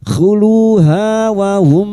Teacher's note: Mim sukun bertemu ya idhar syafawi, mim sukun dibaca jelas tanpa mendengung.